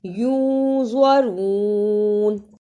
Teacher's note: ینظرون، اسے ینظرون نہیں پڑھنا، اخفا بھی ادا کرنا ہے اور زوا کی صحیح آواز بھی نکلے